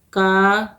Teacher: الف زبر کا، الف خالی ہے، اس سے پہلے زبر ہے، الف مدہ ہے، کا، دو حرکت کھینچ کے پڑھیں گے